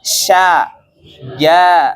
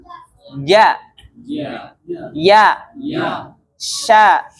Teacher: Jim ya dan syin ya sya ee ya kemudian ja ya tiga huruf ini itu keluar dari tengah lidah yang bertemu dengan langit-langit atas